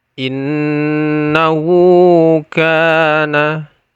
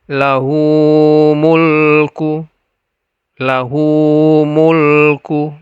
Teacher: Mad silah qasirah ini dibaca dua harokat.